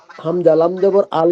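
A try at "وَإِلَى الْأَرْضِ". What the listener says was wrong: এটা হামজা না, এটা লাম। ইলাল, ওয়াও জবর ওয়া, হামজা জের ই, লাম লাম জবর লাল, ওয়া ইলাল, হামজা র জবর আর, দদ জের দি, ওয়া ইলাল আরদি।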